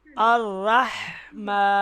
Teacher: ये जो हा है, इसकी आवाज़ गले के दरमियान से आएगी